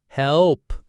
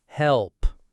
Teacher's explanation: The back of the tongue tenses for the L. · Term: dark L